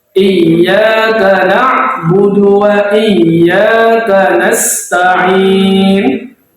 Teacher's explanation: Huruf ya bertasydid itu ditekan, bukan dipanjangkan.